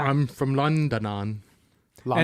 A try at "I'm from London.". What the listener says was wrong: And you added a syllable there.